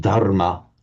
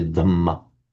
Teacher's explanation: In Sanskrit, it is dharma with a dharma, and the reason it's dhamma in Pali is the separate phenomenon of the phonetic mutation of the consonant cluster rm in Sanskrit, which will routinely become a double m in Pali.